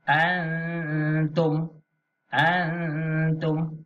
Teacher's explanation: Nun mati selepasnya huruf ta. Ini hukum ikhfa. Jadi kena baca dengung.